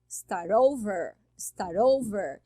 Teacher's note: Falar start over é start over, tá? Ó, juntou o T mais o O, virou o R e fica over, start over. Aí sabe o que acontece?